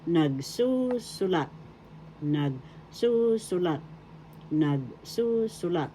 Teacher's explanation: The accent in the second syllable